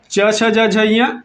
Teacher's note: च छ ज झ ञ तालव्य से।